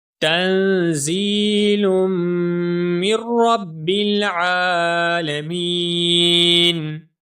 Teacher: تا کے بعد نون ساکن ہے، نارمل سا غنہ ہوگا